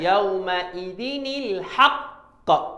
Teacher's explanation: Kemudian al-haqq, huruf qaf itu ada sifat, ketika berhenti kita ada sifat qalqalah. Kemudian sebabkan dia berhenti, kemudian dia ada sabdu, kita keadaan dia sifat qalqalah akbar.